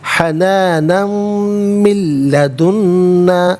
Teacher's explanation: ناظرین یہاں پر آپ دیکھیں کہ حنانن میں نون پر دو زبر کی تنوین، اسے میم کے ساتھ ملائیں گے، میم کی آواز کو غنّے کے ساتھ ادا کیا جائے گا۔ من میں نون ساکن ہے، اسے لام کے ساتھ ملائیں گے، لام کی آواز کو ادا کیا جائے گا۔ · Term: یرملون کا قاعدہ